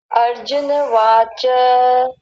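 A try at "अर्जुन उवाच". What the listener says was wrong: वाच कहाँ है? उवाच, ऊ भी तो है।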